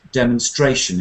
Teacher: actually the stress is right down the end of the word